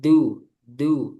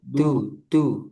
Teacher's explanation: dal tipis jangan du du tapi du du dan dia enggak ada udara